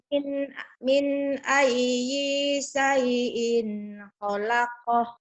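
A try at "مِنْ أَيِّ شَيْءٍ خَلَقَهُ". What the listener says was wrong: Tapi ayyi jangan panjang. ayyi syai. Ayo, jangan panjang.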